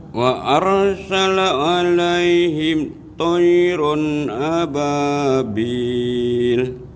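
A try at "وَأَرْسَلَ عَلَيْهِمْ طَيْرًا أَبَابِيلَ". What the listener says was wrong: Coba Pak agak disambung. Itu nanti takut jadi saktah ya. Tapi seperti ini. Wa arsala alaihim itu kan jadi saktah. Tapi terusin. Wa arsala alaihim tayran ababil.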